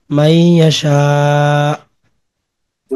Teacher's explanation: হামজার উপর জজম হলে একটু ধাক্কা হয় কলকলার মতো, কিন্তু কলকলা না।